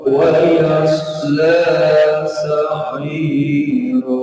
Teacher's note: Kalau ini cukup dua harokat yasla. Tapi sa'ira boleh antara 3 sampai 5 harokat matnya.